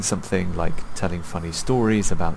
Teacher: Telling funny stories, his voice goes up because there's more coming. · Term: intonation